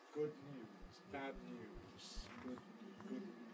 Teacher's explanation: We make the plosive, the alveolar plosive, the D, bad. While we keep our tongue in place, we move the soft palate, which means the air can then escape through the nose, turning the D into an N. But the change from D to N consists just in the movement of the soft palate, nothing else. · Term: nasal release